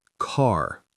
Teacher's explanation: So car in American English, car, with a strong R at the end.